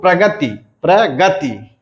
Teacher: इसमें बलाघात आ जाता है ग पे